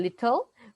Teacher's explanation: the consonant L is pronounced as a separate syllable